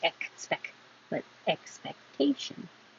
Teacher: hold the K, don't release the air